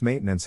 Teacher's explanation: in this case the accent is in the first syllable corresponding to Main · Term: accent or stress